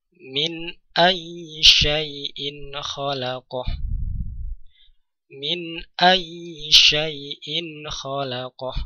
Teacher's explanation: Kemudian setelah yang kedua hamzah berharokat tanwin, kemudian jatuh setelahnya huruf kha, maka tanwin atau suara nun sukun dibaca dengan jelas karena kha juga termasuk huruf izhar